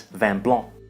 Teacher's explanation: Vin also ends in a nasal sound. The N is not pronounced as a consonant here. Instead, it nasalizes the preceding vowel.